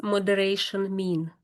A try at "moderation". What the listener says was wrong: you said it quite well, I think. Yeah, that's good. Pretty good.